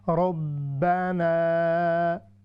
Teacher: را پر جب بھی فتحہ آتی ہے تو وہ اس کو ہم ہیوی کر کے پڑھتے ہیں